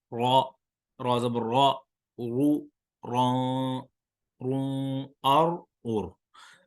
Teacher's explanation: را کو پر پڑھیں گے، موٹا پڑھیں گے